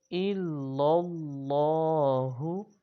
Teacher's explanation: لا الہ الا اللہ، حمزہ کو لام سے ملائیں گے اور لام کو اگلے لام سے ملائیں گے، اللہ تعالیٰ کے لام سے۔ اس کو موٹا بھی پڑھیں گے، اللہ تعالیٰ کے لام کو